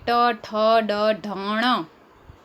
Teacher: જે વર્ણોનું ઉચ્ચારણ કરતી વખતે જીભ મોઢાના તાળવાનો સ્પર્શ કરવો પડે તેને મૂર્ધન્ય વર્ણો કહે છે જેમ કે ટ ઠ ડ ઢણ તો આપણે બોલીએ ત્યારે ટ